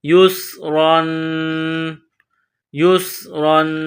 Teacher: اس کے بعد را پر 2 زبر تنوین ہے، را کو موٹا پڑھیں گے، اخفا کریں گے تنوین کی وجہ سے۔